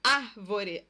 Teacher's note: a tonicidade está na antipenúltima sílaba, por isso o acento. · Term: proparoxítona